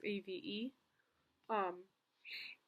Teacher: he actually just doesn't even add that H at the beginning of the word. He just says AVE.